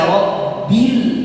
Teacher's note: Rabbil harus ada getaran karena sifat huruf ba al-jahr